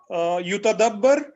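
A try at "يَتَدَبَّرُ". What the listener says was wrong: या के ऊपर जबर है, या पर जबर है, यतदब्बर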